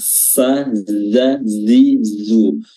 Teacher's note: ujung lidah bertemu dengan ujung gigi seri bawah